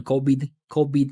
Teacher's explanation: he's kind of using a B sound instead of a V. I think that's pretty uh typical in Spanish.